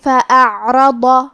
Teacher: آخری میں حرف الضاد ہے. ضاد کو ہم زبان کے کروٹ اور اوپر کے داڑھوں کی جڑ سے پڑھیں گے. کیونکہ ضاد حروف التفخیم میں سے ہے تو ہم یہ حرف کو بھاری آواز میں اور منہ پھلا کے پڑھیں گے.